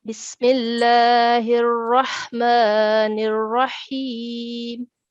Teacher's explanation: All of these ras are carrying mushaddad, ashadda, and fatha as well. So these three ras will be pronounced in a thick sound